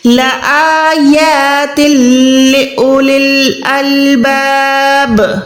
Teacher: बा पे हम जेर पे रुक रहे हैं, तो ये बा साकिन हो जाएगी